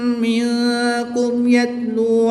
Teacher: میم ساکن کے بعد با اور میم کے علاوہ حرف یا ہے تو یہاں پر اظہار شفوی ہوگا. غنہ نہیں کریں گے. میم ساکن کو خوب ظاہر کر کے پڑھیں گے. · نون ساکن کے بعد کاف ہے حروف اخفا میں سے تو یہاں پر اخفا ہوگا یعنی غنہ زمانی کر کے پڑھیں گے.